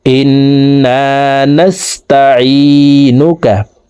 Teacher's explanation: এই আইন হরফকে হলুকের মধ্যখান থেকে উচ্চারণ করব